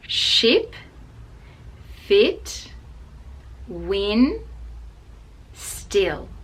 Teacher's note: which again is /I/ with the mouth wide but it is a short sound so we don't make it a long sound